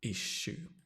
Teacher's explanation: Stress on the ih, issue.